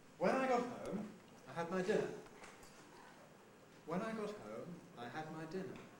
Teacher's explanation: the when clause the adverbial clause of time at the beginning that has a rise on its nucleus home because it's not final it means there's more to come the main clause nucleus din dinner that is final and so